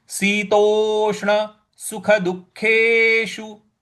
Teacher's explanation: द के बाद जो विसर्ग है उसके आगे ख है तो यहां पर जो विसर्ग का उच्चारण है वो आधा ख का करेंगे